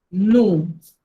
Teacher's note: O con U se pronuncia U y la S no se pronuncia a menos que el verbo empiece con H o vocal.